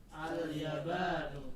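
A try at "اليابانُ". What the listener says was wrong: Ya-nya 2 harokat. Al-yabanu.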